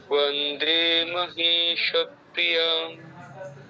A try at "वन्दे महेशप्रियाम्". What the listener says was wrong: নতুন সুর তো, অসুবিধা নেই, আপনি অনুশীলন করলে ঠিক হয়ে যাবে। ঠিক আছে, ভালো হয়েছে।